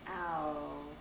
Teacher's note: Looks like you're about to say ah. But with a W after it, so like ow.